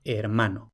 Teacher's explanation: Ahora, aquí ¿por qué no tenemos germano? Porque esa E, aunque sí está en sílaba inicial, sin embargo esa sílaba no es tónica. Entonces si no es tónica, no diptonga.